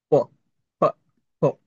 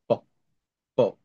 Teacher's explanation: প উচ্চারণ করবেন, ঠোঁট দুইটা একসাথে থাকবে, তারপর আলাদা করবেন। প, প। এগুলোকে বলে উষ্ঠধ্বনি, বাংলাতে উষ্ঠধ্বনি।